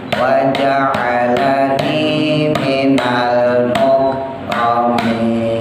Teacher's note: wa ja'ala pendek, ni-nya yang panjang